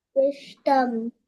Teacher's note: Vishtam, not Vishtham. Vishtam. Ta alpa prana.